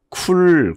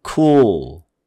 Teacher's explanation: 모음 다음에 L 소리가 오게 되면은 이거는 dark L이라고 그래요